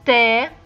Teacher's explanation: the tip of your tongue should touch the inferior part of the upper teeth